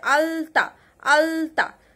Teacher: তাহলে দেখো আমরা তাহলে এটাকে দন্ত ল বলতে পারি, ঠিক আছে? ঠিক যেখান থেকে ত থ দ ধ উচ্চারণ হচ্ছে সেখান থেকেই কিন্তু আলতা ল উচ্চারিত হচ্ছে